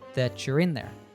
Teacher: all along that you're in there becomes that you're in there the combination of the letters t plus y gives us a CH sound